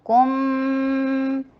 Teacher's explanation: میم کے اوپر آتے ہی میم کے اوپر جو ہے ہونٹ سٹریٹ ہو جائیں گے اور میم کے اوپر غنہ کیا جائے گا، اور اکمل غنہ ہے 2 حرکہ غنہ، کم، اور پھر میم کے نیچے کسرہ، ای کی ساؤنڈ کیجئے اور نون کے اوپر اظہار کیجئے۔